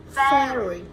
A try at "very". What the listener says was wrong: very. Do bạn nào đọc là red, ready, rally hoặc là fairy, fairy thì là cái âm R nó vẫn chưa đúng.